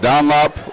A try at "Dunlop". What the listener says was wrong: Yeah, your O's and U's just kill you. Dunlop. No, you said Dunlop.